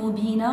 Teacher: وعند الوقف مبينة نقف بمد العوض حركتين